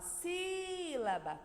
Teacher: então o se é o som mais forte dessa palavra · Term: sílaba tônica